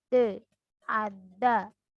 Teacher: Fonem D disebut artikulasi letupan dan cara artikulasinya sama dengan fonem T, yaitu alveolar karena cara artikulasinya dengan ujung lidah · Alveolar karena konsonan yang diartikulasikan dengan ujung lidah.